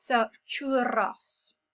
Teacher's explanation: we've got a double R there. Okay, so we've got a roll of the R.